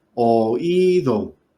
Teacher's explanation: cayó en la I del diptongo formado por la OI, se rompe, se forman 3 sílabas